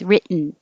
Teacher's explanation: You don't say the T's at all. You put your tongue up in the T position. Written. And then you just make the noise.